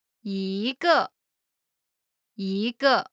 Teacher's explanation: When 一 is followed by a fourth tone, It changes from the first tone to the second tone.